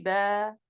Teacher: Au lieu de prononcer 2 ba, je prononce un seul ba avec un ton de plus. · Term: l'allongement